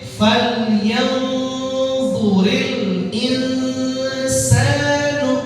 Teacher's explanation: Ya dua-duanya sama-sama ikhfa, sama-sama dengung. Berapa harokat? 2 harokat.